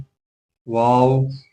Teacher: واو دونوں ہونٹوں کو گول کرنے سے ادا ہوتی ہے